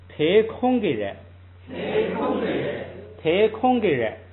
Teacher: 这是一个短句，读的时候呢，最后那个动词读轻声